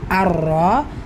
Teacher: ரா ஃபத்ஹா பேச்சு வந்திருக்கிறதுனால வல்லினமா உச்சரிக்கணும் கூடவே சத்தா இருக்கிறதுனால அழுத்தம் கொடுத்தும் உச்சரிக்கணும் அர்ரா கைப் காஃப் கெஸ்ரா பெற்று